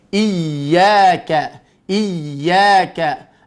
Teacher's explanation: kita tekankan lidahnya bagian tengah, nempelkan ke langit-langit, kemudian jalankan sifatnya yaitu ar-rakhawa.